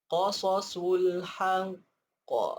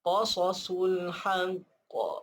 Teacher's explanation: Qaf ni adalah huruf qalqalah. Bila kita berhenti, dia kena ada qalqalah. Dia kena ada bidasan dia tu.